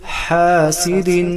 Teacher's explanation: سین مثل سیٹی کی آواز آئے گا